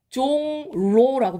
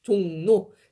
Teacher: 리을이 니은으로 비음화가 된 거예요